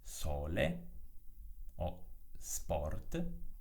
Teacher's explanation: La S ha una pronuncia sorda, quindi si pronuncia S, quando si trova all'inizio di una parola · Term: S sorda